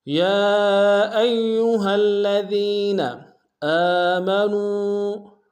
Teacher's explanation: حمزہ کے اوپر کھڑا زبر ایک امتداد میں کھینچیں گے، نون کو واو کے سامنے آئیں گے، واو مدہ ایک امتداد میں کھینچیں گے۔